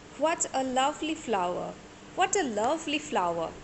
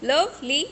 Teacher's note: we are putting stress on love, not ly